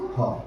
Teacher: So glottal sounds are produced in English with the help of the wide opening of the vocal cords · With open glottis, we produce ha.